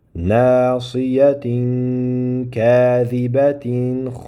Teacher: Vaqf bo'lganda toyi marbuta ha aylanadi